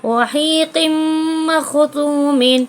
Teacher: یہاں تنوین کے بعد میم آیا ہے تو ملا کر غنے کے ساتھ پڑھیں گے. ادغام مع الغنہ ہوگا.